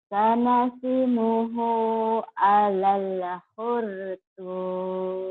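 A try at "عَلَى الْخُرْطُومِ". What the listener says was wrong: Alalnya jangan ada e-nya ya. Ada dikit tuh, dikit tapi. Alal khurtum.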